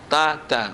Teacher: Ta, ujung lidah dengan pangkal gigi kapak.